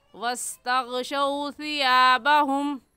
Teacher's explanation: वाव लीन को खींच कर नहीं पढ़ते